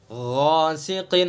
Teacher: غین کو بھی پر پڑھیں گے، الف کو بھی پر پڑھیں گے